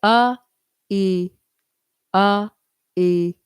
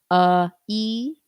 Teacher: And you'll feel to make an e sound. It's just your tongue kind of coming up and forward.